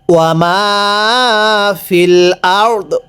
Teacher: ওয়াকফের সময় আমরা এই প্রথম রটা পরিপূর্ণ উচ্চারণ করব, দটা হালকা উচ্চারণ করব